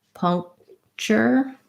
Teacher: naturally most native speakers will just not release that K sound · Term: unreleased stop